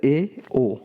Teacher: अर्धसंवृत में मुख का आकार थोड़ा खुला रहता है, जैसे ए ओ, इसमें थोड़ा खुला रहता है।